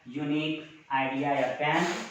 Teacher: में देखिए यो जो है आपका वॉवेल साउंड न बन करके, यहाँ यू का उच्चारण वॉवेल साउंड न बन करके कॉन्सोनेंट साउंड बनता है